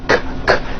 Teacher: There's no voicing on that K. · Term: unvoiced K sound